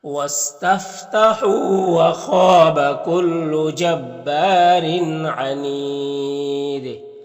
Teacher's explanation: خا حروف مستعلیہ میں سے پر پڑھیں گے، الف مدہ ہے، ایک الف کے برابر کھینچیں گے۔ یہاں پر تنوین کے را کے نیچے دو زیر ہے تو را کو باریک پڑھیں گے، اور اس تنوین کے بعد دیکھیے عین حروف حلقی میں سے تو تنوین میں اظہار حقیقی ہوگا، اور انید میں وقف کریں گے تو مد عارض وقفی ہوگا، دال میں قلقلہ ہوگا، تو اس طرح سے پڑھیں گے۔